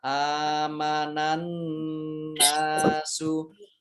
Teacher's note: Alif fathah berdiri mad tabi'i, panjang 2 harokat. Nun tasdid dibaca gunnah atau mendengung, ditahan 2 harokat.